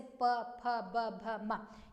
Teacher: प वर्ड के ओष्ठ मतलब कि लिप से आपके स्पर्श हो रहे हैं